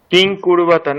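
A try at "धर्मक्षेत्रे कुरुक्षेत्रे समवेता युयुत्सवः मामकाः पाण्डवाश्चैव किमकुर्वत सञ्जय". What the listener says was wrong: তাহলে মকারের পরে অকার আছে ওখানে, তাহলে কিমা পূর্বতা সঞ্জয়।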